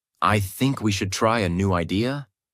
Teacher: One of the biggest mistakes learners make is something called rising intonation. This means your voice goes up at the end of the sentence, as if you're asking a question, even when you're not.